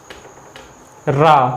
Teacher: ऐसा लग रहा है जैसे जीभ पे से लुढ़कते हुए हवा बाहर निकल रही है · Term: लुंठित